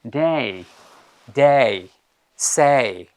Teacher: এখানে এ এবং ই, এই দুটো সাউন্ড মিলে একটা নতুন সাউন্ড তৈরি হয়েছে, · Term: diphthongs